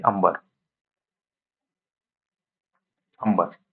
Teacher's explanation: अनुस्वाराचा जो नाकातून आवाज काढतो त्याच्या अगोदर अ उच्चारला जातो म्हणजे अगोदर उच्चारा अ येतो आणि त्याच्यानंतर अनुस्वार देतो आपण अम